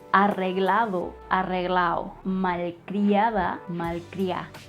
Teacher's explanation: The D sound and letter is also reduced in Cuban slang when it is at the syllables ada, ado, ido.